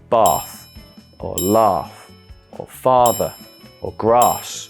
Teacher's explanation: Southern Accents will use a long a sound in words such as bath or laugh or father or grass whereas in the north those words become bath or laugh when